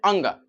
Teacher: यह तीनों को बोलने में काफी कम हवा निकला। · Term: अल्पप्राण